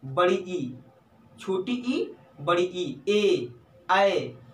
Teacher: छोटी ई, बड़ी ई, ए और आए, जिह्वा के अग्रभाग से ये बोले जाते हैं